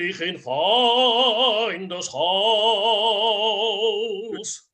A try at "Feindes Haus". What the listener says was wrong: And this is super picky. It's don't double dot the rhythm. It's Feindes Haus. So you're going Feindes Haus. Just make sure it's an eighth note. Feindes Haus.